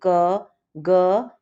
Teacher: श्वास की मात्रा के आधार पर व्यंजन वर्ण के भेद अल्पप्राण इन वर्णों के उच्चारण में मुख से कम वायु निकलती है